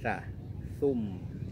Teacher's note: huruf ta ujung lidah kita berada di antara gigi muka atas dan gigi muka bawah. Keluar ujung sedikit, ujung lidah kita keluar sedikit saja.